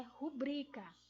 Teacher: Então, ela não é uma palavra proparoxítona. Ela é uma palavra paroxítona. Então, a pronúncia correta dela é rubrica